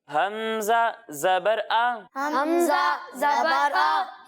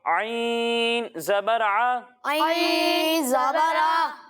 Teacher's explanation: जब हम हमजा की अदायगी करेंगे तो इसे हलक के निचले हिस्से से पढ़ेंगे और जब हम आइन की अदायगी करेंगे तो इसे हलक के दरमियाने हिस्से से पढ़ेंगे